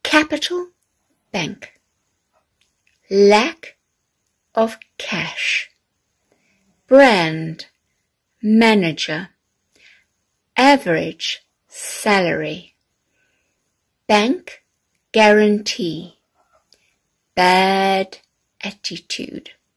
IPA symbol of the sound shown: æ